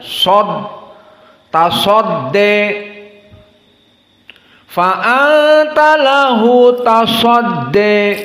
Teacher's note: Sodnya harus tafkhim, latihan. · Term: Mufakhamah sod